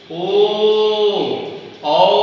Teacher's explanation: तो वृत्तमुखी, मुख मतलब मुंह, जब वृत्त के जैसा मुंह पूरा हो जाए, यानी जब जिस स्वर के उच्चारण में दोनों ओष्ठ गोल वृत्ताकार भाग बनाते हैं उसको हम लोग बोलते हैं वृत्तमुखी।